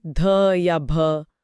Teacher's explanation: इन्हें बोलकर देखिए, आपके मुंह से और अधिक हवा निकलेगी। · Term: महाप्राण